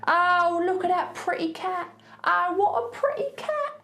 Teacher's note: As you can hear, I'm not saying those T's